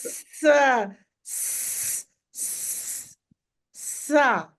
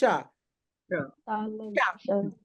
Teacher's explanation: जब जीभ दांतों के पीछे है तब सा की आवाज निकलती है।